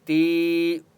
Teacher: اوپر چھوٹی مد ہے اس لیے تا کو 3 سے 4 الف کی مقدار کھینچ کر پڑھیں گے